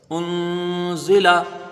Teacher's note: ایک الف کی مقدار یہاں پر غنہ کریں گے اور باقی حروف کو جلدی پڑھیں گے